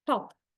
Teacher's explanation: You replace aspirated t with non-aspirated t.